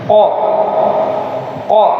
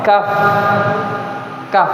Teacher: Qof itu di pangkal lidah. Pangkal lidah yang hampir berdekatan dengan ujung tenggorokan. Ah. Kemudian kaf di atas-atasnya lagi sedikit. Makanya qo qo ah kaf kaf. · Kalau qaf ini dia termasuk dari sifat huruf yang bersifat dipantulkan ketika sukun. Sedangkan kaf e tidak.